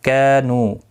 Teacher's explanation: کا الف مدہ ہے، نو واو مدہ ہے، دونوں کو ایک ایک الف کی مقدار کے برابر کھینچ کر پڑھیں گے